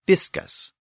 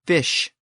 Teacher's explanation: But now, in very early Old English, it became fish. The SK sound shifted to this new SH sound.